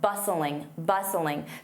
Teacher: Notice that T is silent.